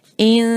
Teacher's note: نون پر ہے جزم، یہاں پر ہم آواز کو ناک میں لے جائیں گے اور ساتھ آواز تھوڑی سی لمبی بھی ہوگی